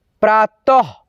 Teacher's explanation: अह की मात्रा का उच्चारण आधा ह होता है